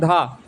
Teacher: धा होता है सघोष महाप्राण से